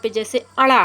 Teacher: यह नासिका ध्वनि है, इसलिए 'ṇa' का उच्चारण बिंदु मुख में प्रतिगामी (retroflex) भाग पर होता है—दरअसल, प्रतिगामी (retroflex) भाग मुख में ही होता है—और इसमें नाक भी शामिल होगी।